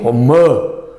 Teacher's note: A tonicidade está no A